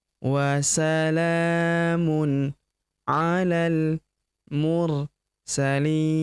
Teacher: huruf la langsung lompat masuk ke huruf lam yang berharakat sukun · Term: hamzah penyambung